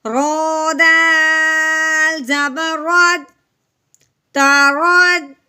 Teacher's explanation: رو بھی متحرک ہے، رو کو ہم نے موٹا کرنا ہے کیونکہ رو کے اوپر زبر والی متحرک حرکت ہے · اب ہم نے کیا کرنا ہے؟ رو کو دال کے ساتھ ملانا ہے، رو کو موٹا کرتے ہوئے